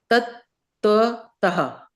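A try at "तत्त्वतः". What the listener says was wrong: Yeah. See, now you got it.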